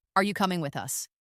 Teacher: Make sure your voice rises at the end. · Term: intonation